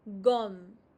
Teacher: The last E is always silent, muted, so you stop at the consonant.